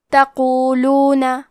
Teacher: حرف القاف کو ہم زبان کے جڑ اور تالو کے نرم حصے سے پڑھیں گے. کیونکہ قاف حروف التفخیم میں سے ہے تو ہمیں یہ حرف کو موٹی آواز میں پڑھنا ہے.